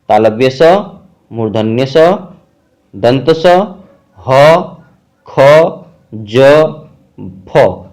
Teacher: संघर्षी, दो व्यंजनों के उच्चारण में दो उच्चारण अवयव इतनी निकटता पर आ जाते हैं कि बीच का मार्ग छोटा हो जाता है, तब वायु उनसे घर्षण करती हुई निकलती है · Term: संघर्षी व्यंजन